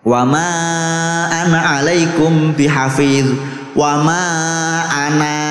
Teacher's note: Kalau Anda wakaf di situ panjang ananya.